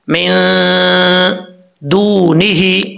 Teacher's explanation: नून साकिन के बाद दाल आ रहा है, दाल आ रहा है तो यहां पे गुन्ना करेंगे , मिन दूनी ही, वाव मद्दा है, एक अलिफ की मकदार · ही, वाव मद्दा है, एक अलिफ की मकदार लंबा किया जाएगा, हा के नीचे खड़ी जेर है, इसको भी एक अलिफ की मकदार लंबा करेंगे